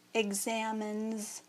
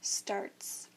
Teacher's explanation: the S also becomes voiced, which makes it say Z.